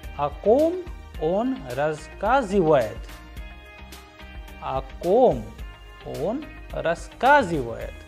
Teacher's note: Here we can also pay attention to the intonation, as the sound at the end, the pitch of the sound rises at the end